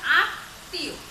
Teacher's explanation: তাহলে আমরা দেখতে পাচ্ছি যে পদের মধ্যে বা শেষে যদি মফলা যুক্ত হয় তাহলে সেই যুক্ত ব্যঞ্জনটির উচ্চারণটা দ্বিত হয় এবং সামান্য নাসিক্য স্বর নাকের ভিতর থেকে উচ্চারিত হয়।